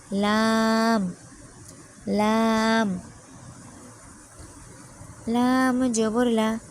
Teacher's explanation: জিহবার আগার কিনারা উপরের দাঁতের মাড়ির সাথে লাগিয়ে উচ্চারিত হয় লাম